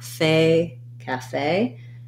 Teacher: In American English, it's going to be the A diphthong, so building from the back, fe, cafe.